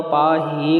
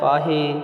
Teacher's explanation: ਛੇਤੀ ਦੇ ਨਾਲ ਬੋਲ ਦੇਣਾ ਲੰਮਾ ਨਹੀਂ ਕਰਨਾ ਜੇ ਆਪਾਂ ਪਾ ਹੀ ਕਰਾਂਗੇ ਫਿਰ ਹਾਹੇ ਨੂੰ ਲਾਣ ਲੱਗ ਜਾਵੇਗੀ। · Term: ਲਘੂ ਮਾਤਰਾ